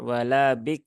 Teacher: rnya enggak terdengar ya rnya hilang